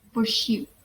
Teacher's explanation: First, we can see there is bilabial, which is articulated by our two lips